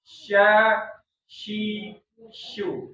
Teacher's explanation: Di tengah lidahnya di langit-langit tapi enggak nempel karena di situ nanti ada udara di situ.